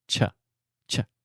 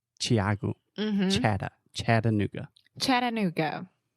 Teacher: a lot of people say shh but it's cha cha